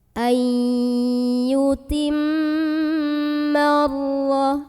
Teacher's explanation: Karena ada alif lam yang di hadapannya ada huruf syamsiyah yaitu huruf ra. Maka alif lam yang tanpa harokat ini kita tidak perlu baca. Dari mim langsung masukkan ke ra. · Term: alif lam syamsiyah